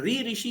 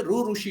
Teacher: आपको देखने को मिलेगा मराठी और गुजराती रीजन में। गुजरात और महाराष्ट्र यहां पर ऋ ऋषि ना बोल के रू ऋषि बोलते हैं।